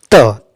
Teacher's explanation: देखिए बोलते हैं अ विकल्प में त जब बोलते हैं ना मुख विवर में जिह्वा दंत को स्पर्श करती है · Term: दंतीय वर्ण